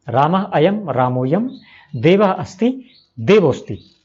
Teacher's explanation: विसर्गों को ओ हो जाता है और वह अ को खा जाता है